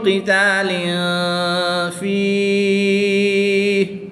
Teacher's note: تنوین کے بعد فا حرف اخفا میں سے ہے تو یہاں پر اخفا ہوگا یعنی غنہ زمانی کر کے پڑھیں گے · یا ساکن سے پہلے حرف کے نیچے زیر ہے تو یہاں پر یا مدہ ہوگا۔ یا مدہ کے بعد ہا کے اوپر سکون عارضی لگ جائے گی تو یہاں پر مد عارض ہوگی۔ وقف کی حالت میں یہاں پر مد عارض ہوگی۔